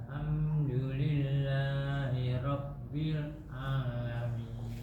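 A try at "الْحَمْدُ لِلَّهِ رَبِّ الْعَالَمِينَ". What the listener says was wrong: Diusahakan jangan putus.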